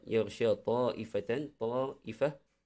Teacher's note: mad wajib, wajib kita sama ada 4 ataupun 5 harakat, kita tak boleh kurang daripada tu. Ikut tempo masing-masing lah, macam mana tempo bacaan masing-masing.